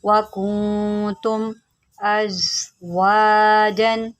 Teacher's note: زا جو ہے اس کو آپ سیدھی کے ساتھ پڑھیں گے کیونکہ یہ حروف صفیریہ میں سے ہے